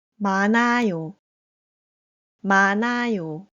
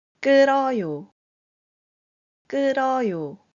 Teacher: When GyeopBatchim 니은 히읗 and 리을 히읗 meets letters with iung and any vowel, 히읗 is omitted from pronouncing the word or letter.